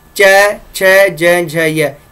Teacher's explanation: च छ ज झ य तालु के स्पर्श करती है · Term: तालव्य